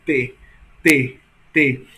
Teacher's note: Percebo que a língua vai aonde? Até os dentes, né? Então é língua dental